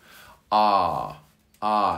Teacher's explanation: the car ar sound and you pronounce that in the back of your throat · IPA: /ɑ:/